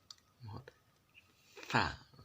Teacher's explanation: Fa ini digigit lidahnya terlebih dahulu, bukan sekedar sa, tapi digigit lidahnya terlebih dahulu.